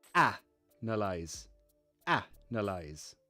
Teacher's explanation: so analyze, you put the stress on a.